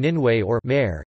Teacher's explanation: Ĕ is to represent an eh sound or [ɛ], as heard in Ninwĕ or mare.